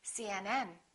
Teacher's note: The rule is we stress the last letter of an abbreviation.